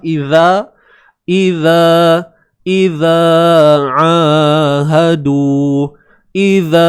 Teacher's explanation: Satu harakat za keluarkan hujung lidah kita di antara gigi atas dan gigi bawah. Idza ahadu. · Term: Zal